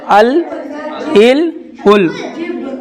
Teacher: जुबान का किनारा ऊपर के सामने के दातों के मस से निकलता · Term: लाम